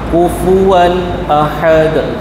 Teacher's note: Dia tak dengung. Dia izhar izhar halqi. Tanwin bertemu dengan hamzah.